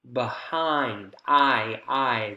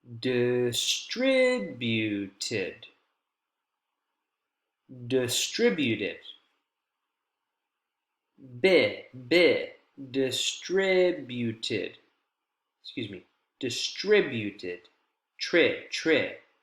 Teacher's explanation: We can hear long, we can hear clear, we have a higher pitch. This is the stress syllable in the focus word behind.